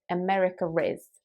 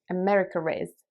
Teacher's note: So for example, if you want to say America is an interesting country, in British English a lot of people will say America is. They will almost add an R sound at the end of America, even though it's not there. That's just what a lot of British English native speakers do.